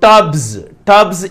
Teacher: టబ్స్, బ అనేటువంటి సౌండ్ కి ఎస్ యాడ్ చేసినప్పుడు అది జాగా పలకబడుతుంది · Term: za sound